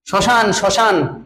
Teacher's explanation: শব্দের আদিতে ম ফলা অনুচ্চারিত থাকে